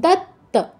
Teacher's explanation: প্রথম ত টা জাস্ট তাজ পরের ত টা পূর্ণ উচ্চারণ করতে হবে